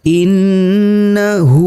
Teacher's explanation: Huruf nunnya harus didengungkan antara 2 sampai 3 harokat. · Hukum bacaannya adalah mad silah qasirah, dibaca sebanyak 2 harokat. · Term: gunnah